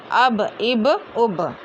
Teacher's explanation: बा दोनों होठों के गीले हिस्से से अदा होता है